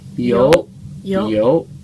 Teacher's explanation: you kind of go down a little bit, and then you go up